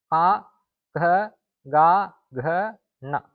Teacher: දිවේ මුල ගිහිල්ලා කන්ටේ වදිනවා. බොටුවේ වදිනවා. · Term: කණ්ඨජ